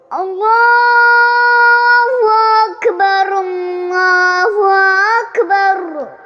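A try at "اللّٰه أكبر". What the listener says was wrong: اللہ، ایسے دبا کے تھوڑا رکھو، لمبا کرو، اللہ میرے ساتھ پڑھو، اللہ اللہ ختم نہیں کرنا جلدی، اللہ جلدی نہیں ختم کرنا نا، اللہ اللہ اللہ ایسے نہیں ہے، تھوڑا سا غنہ لے کے آنا ہے، اللہ سمجھ میں نہیں آ رہی نا میری بات؟ دیکھا اللہ ختم کیوں کر دیتے ہو؟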